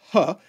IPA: h